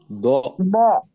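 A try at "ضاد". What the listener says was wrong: bukan D ya tapi Dod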